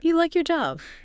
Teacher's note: For yes-no questions like, do you like your job? Your voice usually goes up at the end. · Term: intonation on questions